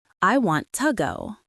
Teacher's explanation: It wasn't to, it was a tiny, short ta. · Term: ghost